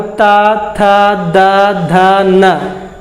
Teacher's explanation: बिल्कुल देखिए कि जीभ जो हमारा वो दांत को स्पर्श कर रहा है, इसीलिए इसको बोलते हैं दंत स को दंत स। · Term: तवर्ग